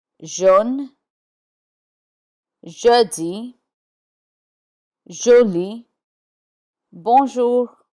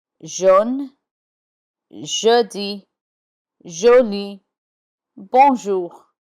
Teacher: The French J is sounded je, like you hear in English words treasure, measure, Asia. Je. J takes the j sound in words beginning or containing J.